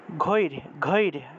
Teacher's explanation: রকে যদি পূর্ণরূপে উচ্চারণ করে র একটা ও আসে না তাই এক্ষেত্রে আমরা র টাকে হসন্ত দিয়ে আগের অংশের সাথে একসাথে উচ্চারণ করলাম